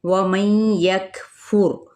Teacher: नून साकिन के बाद यहाँ पे या मुतहरिक है तो इस यहाँ पर इदगाम किया जाता है